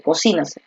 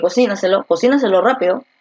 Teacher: Entonces la fuerza de voz está aquí, en la trasantepenúltima. Si la fuerza de voz está en la trasantepenúltima, esta es una sobreesdrújula.